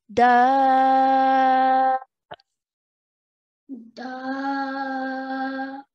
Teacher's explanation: we're stretching the sound of da for 4 counts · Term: Madde Kabir